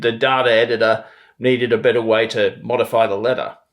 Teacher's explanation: flapping like when you get a t or d between vowels